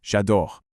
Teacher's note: Because the verb starts at a vowel, the e in je is completely dropped. This is called elision and it's a huge trap for new learners.